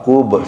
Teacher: Ketemu kol-kolah huruf ba, kub, sehingga harus mantul bacanya.